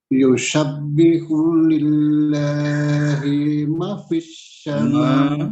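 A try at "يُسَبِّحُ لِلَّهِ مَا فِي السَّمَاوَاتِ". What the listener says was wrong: ma dibaca panjang.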